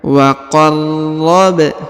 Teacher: Huruf ba dipantulkan karena berharokat sukun ya.